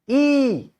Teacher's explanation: there is some changes in the position of my mouth e lips are spread tongue is lower down there and then air goes out of my mouth so there is a production of e no lips are touching